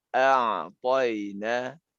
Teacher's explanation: huruf ain disifatkan dia menjadi tawasud